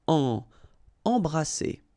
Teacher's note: Alright, E, M here, and then you've got a consonant after, so you get the nasal en. So you don't hear any M, it's really in your nose.